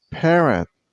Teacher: It has 2 syllables, Parrot. And use a stress on the first syllable. I mean on pair.